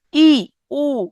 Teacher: সংবৃত স্বরধ্বনি মানে ঠোঁট একদম ছোট, মানে অল্প খুলবে, অল্প মেলবে, অল্প ফাঁকা হবে, হ্যাঁ। দুইটা ঠোঁটের মাঝখানে ফাঁকা ফাঁকা স্থানটা খুবই অল্প থাকবে, সংবৃত।